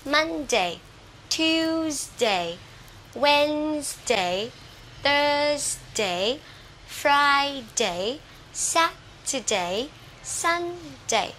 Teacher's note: từ thứ 2 cho tới thứ chủ nhật, dấu nhấn đều là vào âm đầu tiên